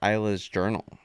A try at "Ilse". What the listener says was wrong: It's not Isla. It would be like Ilsa. Ilsa. It's with an E though. It's not with an A.